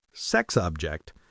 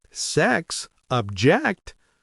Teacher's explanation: that little pause and the change in intonation flip the meaning upside down